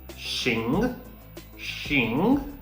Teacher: it's a second tone your voice should be rising